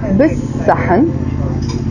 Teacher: but we don't really pronounce the L sound